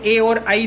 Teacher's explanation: दूसरे सूत्र में देखा हमने तालु ईचू यशानाम तालु, तो ई हो रहा था, इन दोनों से मिलके ए बनता है, तो इसीलिए जो कंठ तालु है उनसे ए और आई दोनों उच्चारित होते हैं